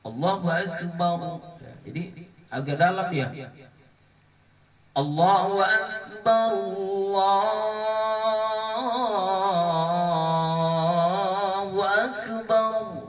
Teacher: huruf ro yang jatuh setelah baris fathah itu dibaca dengan bacaan tebal atau tafhim